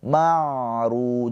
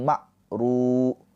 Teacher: Ain sukun mempunyai sifat tawassud ya. Tawasut ada aliran suara sedikit. Marru jangan tertahan. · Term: tawassut